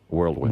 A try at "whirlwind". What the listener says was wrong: World and whirl are two different words.